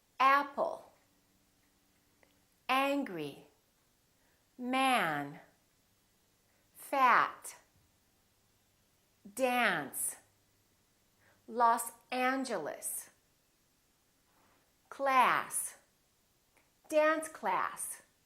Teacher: So your lips are open and your tongue is down and your tongue is tense. In British English, this sound very frequently sounds like ah.